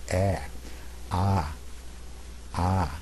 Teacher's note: the back of the throat is open, and the mouth is open wide also, as in the vowel number 4, ah, ah. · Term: open vowel